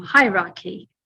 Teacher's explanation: Maybe you can remember it because it's high and the sound goes up. So it's on the first syllable, hierarchy. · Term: stress